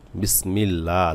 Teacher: লামে এক আলিফ টান হবে